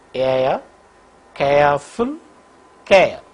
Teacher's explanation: During the articulation of this diphthong air, the glide movement begins from a position in between front half close and half open and moves in the direction of RPA. The lips are unrounded for the both elements.